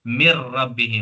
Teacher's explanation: नून की आवाज को रा में मिलाया गया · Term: इदगाम